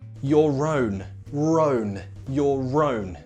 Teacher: the next word starts with a vowel sound. So in this case, we have R linking.